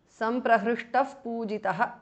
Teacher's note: Visarga changes to upadhmaniya.